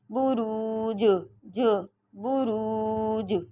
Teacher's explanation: اب یہاں جیم پہ جزم آ گئی، جیم پہ قلقلہ ہے